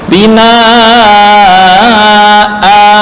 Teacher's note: Binaan ini kalau ditulis asalnya adalah binaan an tanwin ini asalah harakat hidup ditambah nun sukun. Nah, karena waqaf nun sukun ini diganti dengan alif